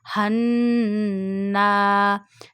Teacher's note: when noon got a tashdeed sign on it, we do gunna in noon sound. It means take noon sound into the nose and stretch up to one finger.